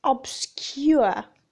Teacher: the lips are rounded at the beginning then neutral as the glide progresses